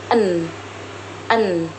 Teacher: N. Huruf N dibentuk dengan menggunakan lidah dan gigi atas serta menghasilkan suara yang bersuara melalui rongga hidung atau disebut nasal alveolar